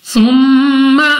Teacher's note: سب سے پہلے ہمارے پاس یہاں پہ میم مشدد غنہ کر کے پڑھیں گے، نون ساکن کے بعد تا حروف اخفا میں سے ہے، اخفا کا قاعدہ ہے غنہ کر کے پڑھا جائے گا۔